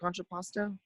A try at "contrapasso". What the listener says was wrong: Contrapasso. No T.